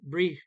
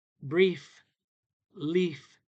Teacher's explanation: The teeth touch the lip momentarily. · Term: F sound